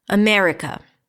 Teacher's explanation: we already agreed that the me is the primary stress